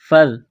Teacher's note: ذال کو پڑھتے وقت زبان تھوڑی سی باہر نکالیں گے